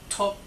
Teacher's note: that's a high tone ending in a K